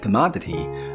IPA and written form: kəˋmɑdətɪ (commodity)